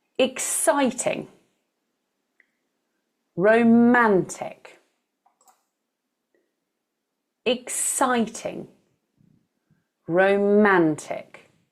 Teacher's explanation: three-syllable words where the stress is in the middle of the word. This is more unusual.